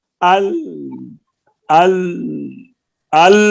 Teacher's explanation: آواز جاری بھی نہیں ہے اور رکی بھی نہیں ہے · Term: درمیانی آواز